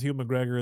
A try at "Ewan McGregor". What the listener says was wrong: Yeah, you're putting too much H into it. Ewan. Ewan McGregor.